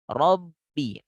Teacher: Memang ba itu tertahan suara. Betul, tertahan suara. Buktinya kan suara nggak keluar. Karena mulut tertutup. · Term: bunyi samar